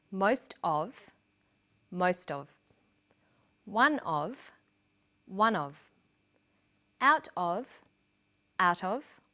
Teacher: Notice that of in these phrases is unstressed.